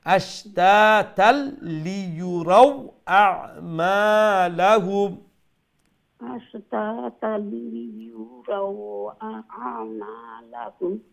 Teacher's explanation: রাও এন্ডে দি ওয়াও শোনা যাইতো